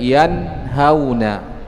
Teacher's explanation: nun sukun bertemu dengan ha. Maka cara membacanya nun sukunnya itu harus dibaca jelas. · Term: إظهار حلقي